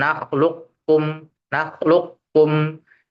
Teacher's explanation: Jadi posisi lidah itu ke makhrajnya qof dulu dan posisi lidah itu dikembungkan atau dimasukkan ke sifat istila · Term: idgham naqis